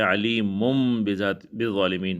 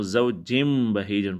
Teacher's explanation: نون تنوین کے بعد جو ہے با آیا ہوا ہے تو نون تنوین کو، یعنی جو نیچے دو زیر ہے تنوین کے، اس کو ہم میم سے بدل لیں گے تو زوجن کے بجائے ہم زوجم بہیجن پڑھیں گے۔